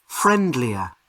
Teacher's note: So the strongest sound is on the first syllable.